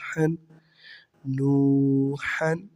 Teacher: نون واو پیش نو، ہا دو زبر حن، نوحن۔ آگے ہا حروف حلقی میں سے ہے، یہاں پر ہم غنہ نہیں کریں گے